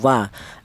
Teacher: kalau untuk wawu ini dihasilkan dari kedua bibir yang renggang tidak rapat